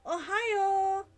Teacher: with stress on the last syllable, making it longer